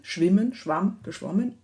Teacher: ein wechsel von vokal qualitäten und quantitäten also längen und kürzen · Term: ab laut